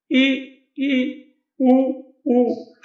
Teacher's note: इन स्वरों में सबसे कम मुंह खुलता है